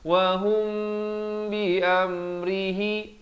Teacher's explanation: mim mati bertemu ba, ikhfa syafawi. Teman-teman dapat lihat di sini mimnya kosong, tidak bertanda, dibacakan 2 harakat.